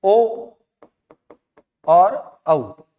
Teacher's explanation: होंठ गोल हो गए, तो उन्हें हम वृत्ताकार कहेंगे।